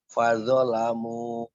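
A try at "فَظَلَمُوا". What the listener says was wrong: iya tadi bapak zonnya panjang itu bukan alif ya ini zo memang punya tangkai wa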